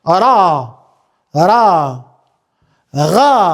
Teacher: Por kur ajo ka fetha sipër, pra ka e sipër, ka zanorin e, lexohet pra e trashë.